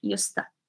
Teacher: Because used to, we write it separately, but when we say it actually together. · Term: linking sound